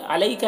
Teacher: یہاں پر یا لین ہے اسے جلد پڑھنا ہے